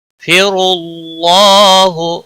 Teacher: را کو پر پڑھیں گے پیش کی وجہ سے، اور اللہ کے لام کو بھی موٹا پڑھیں گے پیش کی وجہ سے، اور اس کے اوپر کھڑی زبر ہے ایک الف کے برابر کھینچ کر پڑھیں گے، او کو کھینچنا نہیں۔